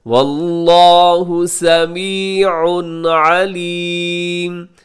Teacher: سمیع علیم، سمیع کے آخر میں تنوین ہے، تنوین کے بعد عین ہے تو یہاں اظہار کیجیے گا جسے اظہار حلقی کہا جاتا ہے